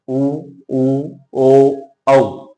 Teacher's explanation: इनके उच्चारण में हमारे होठ गोलाकार हो जाते हैं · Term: व्रतमुखी